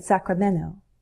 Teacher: we can drop the T in Sacramento